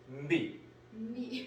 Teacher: 얘는 성대를 떨어줘야 돼요. 하면 떨거든요. 이 살짝 들어갑니다. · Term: B